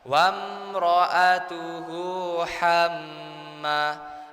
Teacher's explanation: ada mim bertasydid. Itu namanya gunnah ya Pak Bu. Jadi kita itu bacanya itu ditahan sebentar Pak Bu. Ditekan sebentar.